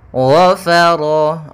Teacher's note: Yang dimana gha pangkal lidah kita terangkat. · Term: huruf yang isti'la